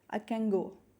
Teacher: And the other examples, you can see that the long vowel is shortened, which is known as vowel reduction, and velarization, where I can n, the final n, can, in can, the final n takes the velarized effect from the g sound and becomes a bit velarized. I can go. Instead of saying I can go separately, we usually speak in a rapid form and we say I can go, where the final nasal n takes a bit effect from the velar g.